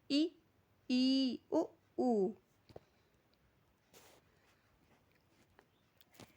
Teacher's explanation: इसमें जब हम उच्चारण करते हैं तो हमारा जो मुंह होता है वह पूरा क्लोज रहता है। बंद रहता है। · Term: संवृत